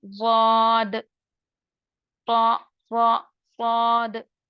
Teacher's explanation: सिफत इस्ताला प्लस सिफत इतबाक, बहुत ही पुर तरीके से, बहुत ही मोटा ये हरफे पढ़े जाते हैं। इतबाक की वजह से इन हरफों की आवाज बाकी मुस्तालिया हर्फ की बनिस्बत थोड़ी सी मुखफ़्फ़म हो जाती है, यानी कि और थोड़ी मोटी हो जाती है।